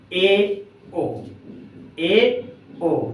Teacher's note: इन स्वरों के उच्चारण में मुख द्वार आधा बंद रहता है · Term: अर्ध संवृत स्वर